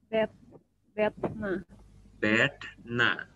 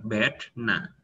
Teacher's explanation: Ya, th-nya yang retroflex ya. Th, bedna. Ya.